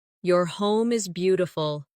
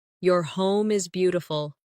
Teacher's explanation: Stress beautiful to make the compliment sound genuine.